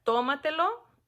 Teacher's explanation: la sílaba tónica recae en la sílaba pre antepenúltima o la cuarta sílaba